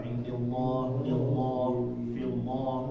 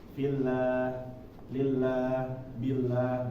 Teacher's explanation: kalau huruf kalimat Allah ya sebelumnya berharokat kasroh, jangan dibacanya menjadi tebal